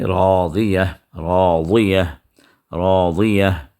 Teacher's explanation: آپ کے زبان کا کنارہ آپ کے اوپری داڑھ کے اندرونی کنارے کو جا کر اگر لگے تو وہاں سے ضاد کی آواز نکلتی ہے